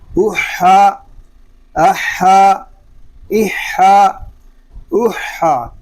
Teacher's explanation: حمزہ حا زبر اح، حا زبر حا احا، حا حلق کے درمیان والے حصے سے ادا ہوگا، اور حا کو ادا کرتے وقت حلق پر زور دے کر اس کو ادا کریں گے